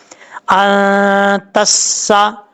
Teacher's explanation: سین جو ہے وہ سیٹی کے ساتھ پڑھا جائے گا، اس کو بغیر سیٹی کے ساتھ نہیں پڑھنا. تسا، یہ جو یہ آواز آ رہی ہے یہ سیٹی ہے.